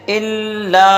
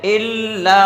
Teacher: اب آ گیا الا، تو الا پہ حمزہ پہ زیر ہے، بغیر کھینچے پڑھیں گے۔ لام پہ الف ہے تو ایک الف کے برابر کھینچ کے پڑھیں گے۔ لام پہ تشدید ہے تو کچھ رک کے ڈبل ادا کرنا ہے اسے